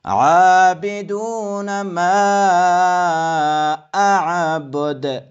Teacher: در اینجا دو عین آمده که از وسط حلق ادا کنید و دال آخر را هم قلقله باید شود.